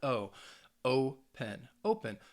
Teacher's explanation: Think of the verb open, all right? Open, to open something, has two syllables, but in that case, the stress is on that first syllable, that O.